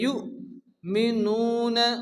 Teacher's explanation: ইউ এখানে হামজা সাকিন, ইউ ঝটকা হবে। ইউ মিনুন, নু মাদ্দাম 1 আলিফ টেনে পড়তে হবে।